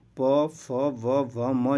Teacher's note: ओष्ठ के द्वारा बोले जाने वाले वर्ण को दोस्तों ओष्ठ व्यंजन कहा जाता है। ठीक है, जैसे प बोलिए आप, देखिए ओठ को टच करेगा।